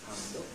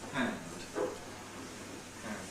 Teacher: Japanese N is a bit longer than English N. And in particular, English has no final vowel, but it's merely D, which gets devoiced, because it's a linis obstruent in final position, and.